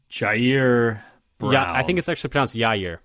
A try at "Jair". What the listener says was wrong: Yeah, I think it's actually pronounced Yair. I think it's a Y sound.